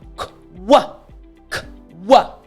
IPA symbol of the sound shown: k